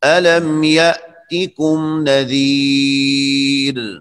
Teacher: یہ را وقفاً باریک ہے